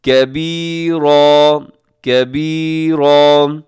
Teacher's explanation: کبیرن پہ وقف کریں گے تو کبیرا، کاف باریک رکھیں گے